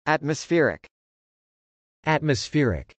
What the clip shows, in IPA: ˌætməsfˈɛrɪk